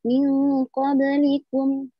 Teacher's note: hukumnya qalqalah sughra itu memantul secara tipis tapi memantulnya itu mengalir